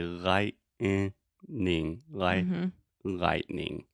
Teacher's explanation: when I pronounce it fast I use a stop T